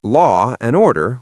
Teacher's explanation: We just say law and order with a little pause or a glide.